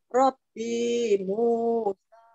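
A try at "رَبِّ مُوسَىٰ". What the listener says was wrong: Robbi Musa, binya pendek.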